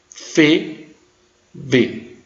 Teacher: Então eu tenho as consoantes bilabiais, PB, ME, nasal. Lábio-dentais, os lábios batem nos dentes